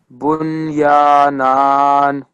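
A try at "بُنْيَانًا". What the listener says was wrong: Okay, well done.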